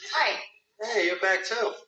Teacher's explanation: there was a very very minuscule R sound in between the words